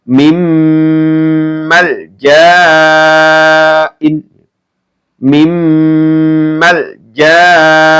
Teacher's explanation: Kemudian ini mim ya. Ya, ketika ada nun sukun atau tanwin bertemu dengan huruf mim, maka juga dibaca mendengung.